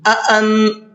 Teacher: نون میں اخفا کر کے پڑھیں گے، اس لیے کہ یہاں پر نون ساکن کے بعد میں تا آ رہا ہے اور تا اخفا کے حرفوں میں سے ہے۔